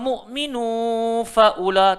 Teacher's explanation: tanwin bertemu fa, nak kena dengung